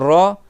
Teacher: le bout de la langue il touche mais il touche en vibrant